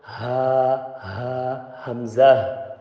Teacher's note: this ha and hamza from the bottom of your throat. Ha, it just come out.